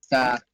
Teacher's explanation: زبان کی نوک اوپر والے دانت کے کناروں پہ لگتی ہے